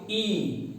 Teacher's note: देखिए आपकी जीभ जो है आपके तलुए में पीछे सट रही होगी। आपकी जीभ आपके तलुए में पीछे ऊपर की ओर, ई।